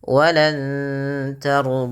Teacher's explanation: Samarkan bunyi suara nun kepada huruf ta yang di mana nunnya berwarna hijau yang artinya dibaca dengan bacaan ikhfa.